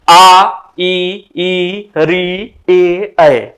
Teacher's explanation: हमारे जो ओट होते हैं वह वृत्त के रूप में नहीं बनते हैं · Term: अ वृताकार, अवृत्ताकार